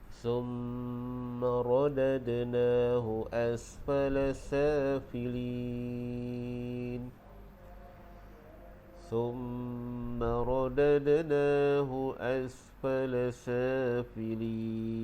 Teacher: hukum mim yang bersyaddah dibaca dengan dengung, jadi wajibal gunnah.